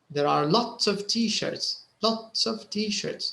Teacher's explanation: so lots is stressed t-shirt is stressed there are is not stressed · you can notice that they actually stress the quantifier